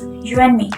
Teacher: It becomes you and me. The D sound in the word and disappears. There is also nasalization. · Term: elision